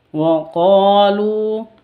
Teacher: qo dan lu panjang dua harakat